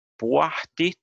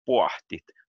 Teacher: Puahtit, and here it says voiceless. Puahtit, and also unaspirated. That means that you don't have any wind coming out of your mouth.